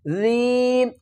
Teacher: ذال کو نرمی سے بھی ادا کریں گے اور ایک الف کی مقدار کھینچ کر بھی پڑھیں گے